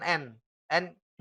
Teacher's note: keluar lewat rongga hidung dan suaranya itu tipis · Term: huruf ghunnah